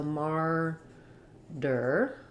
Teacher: the second syllable is the unstressed er sound but it still has that tight back american r